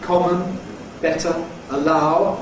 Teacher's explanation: Typical words like ‘common’ /ˈkɒmən/, ‘better’ /ˈbetə/, ‘allow’ /əˈlaʊ/, where in the unstressed syllable we have /ə/. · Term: schwa